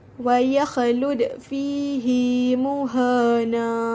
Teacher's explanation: Caranya adalah dengan menyambungkan ha dhamir yang berbaris kasrah dengan ya, huruf mad pada kalimah fihi, yang menjadikan bacaannya fihi muhana. Bacaan panjang dengan kadar 2 harakat di atas ialah ketika wasal sahaja dan bukan ketika waqaf. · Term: mad silah